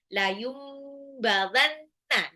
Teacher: Nun sukun ketemu ba itu iklab ya. Jadi nunnya berubah jadi mim.